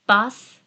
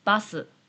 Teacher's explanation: In English, we can finish with a consonant. But in Japanese, most of the time becomes a vowel sound at the end.